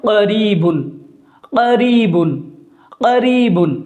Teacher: بڑا قاف ہے اس لیے اس کی آواز پر ہو کر نکل رہی ہے، موٹی ہو کر نکل رہی ہے